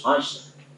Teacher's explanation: jadi harus ashr, nggak boleh ash saja, harus ra-nya juga muncul.